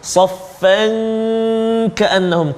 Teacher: Ikhfa hakiki, dengung 2 harakat